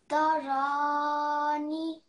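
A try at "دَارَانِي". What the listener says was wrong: Okay, remember this is a ya mother. So what do we need to do here? We have to elongate for 2 seconds. Darani.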